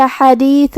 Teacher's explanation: کلمت حدیث میں یہاں حرف الحا کو ہم حلق کے درمیان والی حصے سے ادا کریں گے